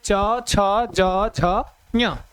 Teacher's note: इन सबका उच्चारण स्थान तालु, क्या हो जाता है, तालु, तालु हो जाएगा, ठीक है।